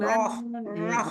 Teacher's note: Ro itu tebelnya di dalam bukan karena di o-in bibirnya.